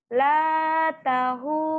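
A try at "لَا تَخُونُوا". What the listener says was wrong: La takhu kha. La takhunu.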